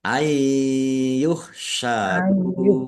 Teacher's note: Nunnya tidak dibaca dan ditahan biar tampak mendengung.